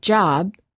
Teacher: But if we say the word job, we cannot continue the final B sound. We stop the airflow by closing our lips. Therefore, B is a stop. If we quickly open our lips, we can then release the stop and say job.